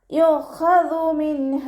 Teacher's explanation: നൂൻ സാക്കിനയ്ക്ക് ശേഷം ഇളുഹാറിൻ്റെ അക്ഷരമായിട്ടുള്ള ഹ വന്നു. നൂൻ സാക്കിനയെ വ്യക്തമാക്കി മണിക്കാതെ ഉച്ചരിച്ചു കൊടുക്കുക